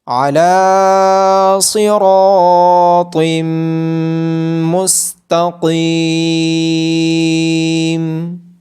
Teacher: عین کی آواز گلے کے درمیان سے آئے گی۔ لام کو کھڑی زبر ہونے کی وجہ سے لمبا کیا جائے گا۔